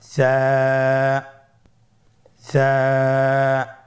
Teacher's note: সা হরফটির মাখরাজ হলো উচ্চারণের স্থান জিহ্বার আগা সামনের উপরের 2 দাঁতের আগার সঙ্গে লাগিয়ে উচ্চারিত হয়।